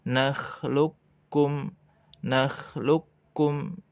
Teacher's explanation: Ketika qaf sukun bertemu dengan kaf, maka dileburkan kepada kaf sehingga dibaca nakhluqkum, nakhluqkum ya.